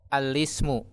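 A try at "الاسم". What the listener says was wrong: La, jangan al. Alismu. Alismu.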